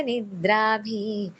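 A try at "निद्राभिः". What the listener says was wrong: ನಿದ್ರಾಬಿಹಿ ಒಂದು ಅಲ್ಲಿ ಇದಿದೆ ವಿಸರ್ಗ ಇದೆ ನಿದ್ರಾಬಿಹಿ ಅಂತ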